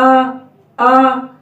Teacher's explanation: زبر کی آواز اوپر اٹھے گی لیکن موٹا نہیں ہوگا۔